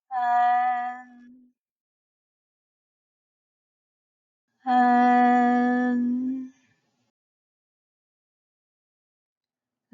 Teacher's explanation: tip behind the upper teeth 發音直接了當 The tone is straightforward 使用前鼻音可以延長聲音並振動聲帶 Use the front nasal to lengthen the sound and vibrate the vocal cords